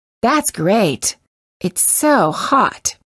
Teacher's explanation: you will sometimes hear Americans release the final T if they do it's usually at the end of a phrase